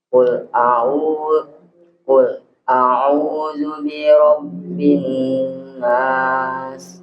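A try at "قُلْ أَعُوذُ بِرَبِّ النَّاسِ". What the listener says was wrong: Nah, kurang di temponya. Qul a'udzu birabbin nas.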